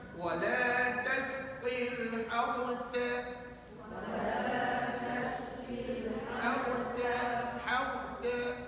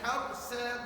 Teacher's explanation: Ta ni hujung lidah keluar, tahan pada gigi kacip.